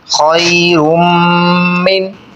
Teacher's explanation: خو یا زبر خوئی، را میم دو پیش، رم خیرم میم نون زیر من، خیرم من، یہاں پر میم مشدد پہ غنہ کریں گے، ناک میں آواز لے کر جائیں گے